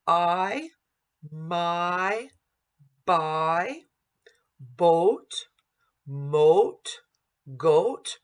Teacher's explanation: we want to stay on that primary vowel and then right at the end go to the secondary vowel so that the listener knows exactly what the word is. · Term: diphthongs